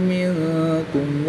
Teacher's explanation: نون ساکن کے بعد حرف اخفا میں سے کاف آ گیا تو یہاں پر بھی اخفا یعنی غنہ کر کے پڑھیں گے، یہاں پر بھی اخفا کریں گے۔